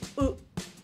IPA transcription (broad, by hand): oʊ